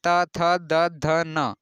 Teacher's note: दंत, दंत में अगर आप बोलते हैं त, थ, द, ध, न, तो इसमें आप पाएंगे कि दांत में जीभ सट रही है।